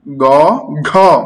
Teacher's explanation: গ হচ্ছে অল্প প্রাণ, ঘ মহাপ্রাণ হয়ে বের হচ্ছে